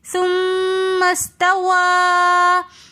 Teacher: توا کے اندر واو کو پڑھتے وقت ہم نے ہونٹوں کو مکمل گول کر دینا ہے تاکہ واو کی پراپر طور پر ادائیگی آئے. · ثم استوى کے اندر مد منفصل ہونے کی وجہ سے ہم یہاں پر اس کو 3 الف کی مقدار کھینچ کر پڑھیں گے